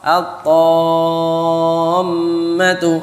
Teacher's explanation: maka alnya tidak jelas. Jadi asy-syamsiyah, al-syamsiyah atau idgham, diidghamkan.